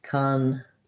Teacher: So that's an option, which would sound like congrats, second syllable stress, and black cat vowel there